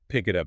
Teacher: The K at the end of pick links to the I. The T at the end of it links to the U. No gaps. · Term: consonant to vowel linking